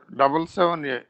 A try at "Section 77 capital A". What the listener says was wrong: Don't say section 77A. Because it is inserted later part. That's why the letter should be the capital letter directly added to the 77 without any punctuation.